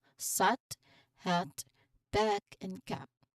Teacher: It's a short open and slightly tense sound where your mouth is quite wide and your jaw is dropped. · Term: short a sound